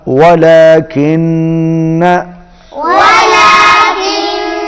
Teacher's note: واو پر ہونٹ گول ہوں گے، نون پر غنہ ہوگا